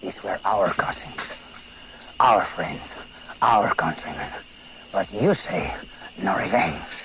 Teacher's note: It's almost like slurred. He's also got that guttural, growly thing going on there